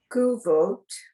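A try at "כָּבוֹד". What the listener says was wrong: Not coo, not really coo, not really coo. Kavod. K, like k. Kavod. Kavod.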